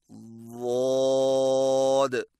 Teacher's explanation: ضاد کی ادائیگی میں زبان کی جڑ اور درمیان کو تالو کی طرف بلند کریں اور زبان کے موٹے کنارے کو اوپر والی داڑھوں کی جڑ پر آہستہ آہستہ نرمی سے لگائیں